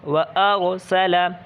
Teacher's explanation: را ساکن سے پہلے اگر زبر یا پیش ہو تب بھی را کیا ہوگی؟ پر ہوگی